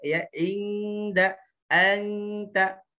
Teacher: Tapi disamarkan bunyi n-nya, ya bunyi n-nya, kemudian disiapkan huruf setelahnya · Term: ikhfa